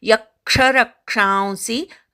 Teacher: यक्षरक्षांसी, य आणि र वर आघात घ्यायचा, क्षावरच्या अनुस्वाराचा उच्चार करायचा